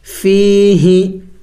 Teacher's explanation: ہاں کو لمبا نہیں کریں گے، ہاں کو نہیں کھینچیں گے، اس لیے کہ ہاں کے نیچے زیر ہے، اور زیر ہے یعنی حرکت ہے، اور حرکت والے حرف کو لمبا نہیں کیا جاتا۔